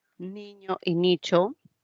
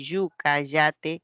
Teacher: Niño y nicho, por el punto de articulación, la ñ, el sonido cha, el sonido ya, de yuca, yate, son palatales.